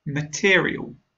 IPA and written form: məˈtɪə.ri.əl (Material)